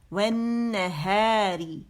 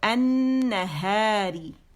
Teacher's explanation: لام جو ہے یہ نون مشدد کی شکل میں پڑھا جا رہا ہے